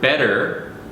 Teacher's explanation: in English for example the word better the two T's it's it's not really a t sound it's this flap sound